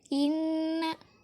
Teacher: Yang kedua adalah gunnah musyaddah, karena nunnya bertasydid. Jadi ketika membaca didengungkan dengan 2 harokat.